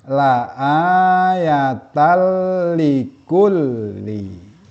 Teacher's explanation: Contohnya seperti ditunjukkan dengan warna merah di sini, ada fathah tanwin berjumpa dengan lam. Di sini tanwin masuk ke dalam lam, tidak disertai dengan gunah atau dengung. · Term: idgham bila gunnah